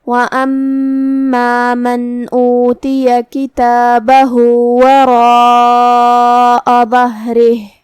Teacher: کلمت وَأَمَّا میں میم پہ تشدید ہے تو 2 حرف کے برابر ہمیں میم کو پڑھنا ہے، کیونکہ تشدید کی اصلیت 2 حرف ہوتی ہے.